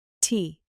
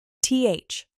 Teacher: T th The difference is that one blocks the air completely and the other lets it flow